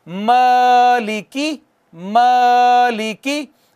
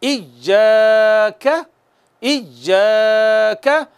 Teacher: झटका सिर्फ हमजा पे लगेगा, अलिफ को बगैर झटके के प्रॉपर आराम सुकून से एक अलिफ जितना खींचेंगे, यानी दो हरकत के बराबर